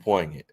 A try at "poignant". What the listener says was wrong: You don't pronounce the G.